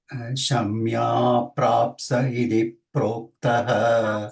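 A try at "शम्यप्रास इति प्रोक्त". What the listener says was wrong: Prapsa, no, not Prapsa, only Prasa. Shamya Prasa iti Prokta, iti is a Dvitva and Proktaha Visarga. Itif, no. There is no Visarga after iti. It is Dvitva. Iti Prokta. No Visarga after iti. Prokta. Iti is a avyaya.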